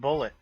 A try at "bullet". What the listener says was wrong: You're saying it like a French person. Boulet.